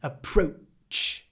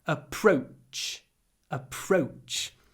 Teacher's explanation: here we have a clipped o o before the unvoiced CH at the end approach a pro little pause CH approach approach a different approach